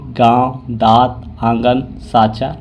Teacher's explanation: नाक और मुंह दोनों से होता है और उच्चारण में लघुता रहती है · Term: अनुनासिक